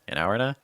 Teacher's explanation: “an hour and a” can really run together if you’d like because none of these words are stressed.